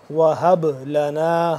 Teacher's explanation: با کے اوپر جزم ہے تو یہ با ساکن ہے تو یہ ہو جائے گا قلقلہ